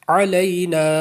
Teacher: عین جو ہے یہ حلق کے درمیان سے نکالیں گے